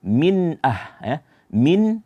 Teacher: hukumnya izhar dibaca dijelaskan nunnya